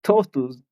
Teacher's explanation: sí tiene sonido de T, el dental